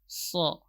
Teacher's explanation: sad, ini huruf safir sughra, keluar dari ujung lidah, berada di ujung gigi seri bawah. Kemudian ujung gigi seri atas bawahnya rapat.